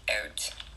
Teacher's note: the tongue is often more raised in the mouth than in other varieties of English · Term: Canadian rising